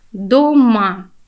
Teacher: первый слог до будет безударный ма будет сильное место ударный слуг дома и в данном случае перед нами стопа в